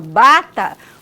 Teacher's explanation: bilabial porque nós articulamos tanto o lábio inferior quanto superior · mas se eu falo bata, o B vibra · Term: vozeamento